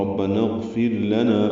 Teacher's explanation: غین ساکن پہ اظہار ہے، را باریک پڑھیں گے کیونکہ اس سے پہلے فا کی نیچے زیر ہے. · لام کو جلدی اور باریک پڑھیں گے